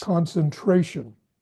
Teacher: little less emphasis on the first two syllables